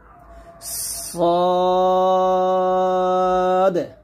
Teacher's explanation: সদ যখন উচ্চারণ করবেন মুখটা ভরে যাবে। মুখটা ভরে উচ্চারণ করতে হবে।